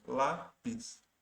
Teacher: a sílaba tônica ali, o acento, está na penúltima sílaba